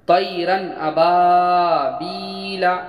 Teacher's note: نون ساکن یا تنوین کو بغیر غنہ کے ظاہر کر کے پڑھیں گے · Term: اظہار حلقی